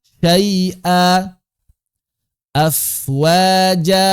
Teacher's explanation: Semuanya berubah menjadi mad asli 2 harokat. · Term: mad iwad